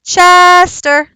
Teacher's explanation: is Chester so if I was calling him I'd say Chester the schwa is on the ER